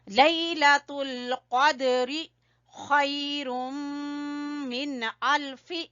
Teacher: خا گلے کے اوپر والے حصے سے، اور یہاں پر ادغام بالغنہ ہے، تنوین کے بعد میم ہے تو یہاں پر غنہ کریں گے، خیر، اتنا۔